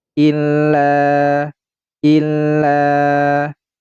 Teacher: Pada kalimat illa, tepatnya di huruf lam, ini memiliki hukum mad tabi'i sebab ada alif dan sebelumnya adalah huruf yang berharokat fathah. Maka ini dibaca panjang dua harokat.